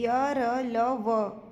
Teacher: यरल व क्या है सघोष है और अल्पप्राण है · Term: अंतस्थ व्यंजन